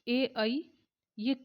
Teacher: ए ऐ कंठ और तालु लगते हैं। दोनों कंठ तालव्य इनका उच्चारण स्थान है।